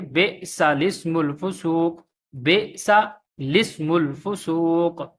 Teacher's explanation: تو یہ جو لام ہے لام کو سین کے ساتھ ملائیں گے، بعد میں جو حمزہ پڑھا ہے الف پڑھا ہے، اسم الفسوق یا اسم الفسوق نہیں پڑھیں گے بلکہ لام کے ساتھ ملا کے پڑھیں گے، بے سا لسم الفسوق، بے سا لسم الفسوق۔